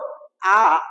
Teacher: last ক্লাসের ভিডিওটা যদি তোমরা দেখে আসো ঠিক এইদিকে ছিল আ এমন একটি স্বরধ্বনি যেটা একই সাথে নিম্ন স্বরধ্বনি এবং একই সাথে মধ্য স্বরধ্বনি